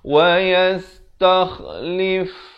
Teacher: Kha ni makhrajnya di hujung kerongkong juga, macam huruf ghain.